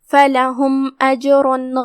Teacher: کلمت فَلَهُمْ یہاں فا پہ زبر ہے، لام پہ بھی زبر ہے، ہا پہ پیش ہے تو یہ تینوں حرکات کا دھیان رہے ہم اسے ادا کریں گے. آخری میں میم پہ جزم ہے لہذا ہم میم کو ظاہر کریں گے کیونکہ یہاں حکم ہوا اظہار شفوی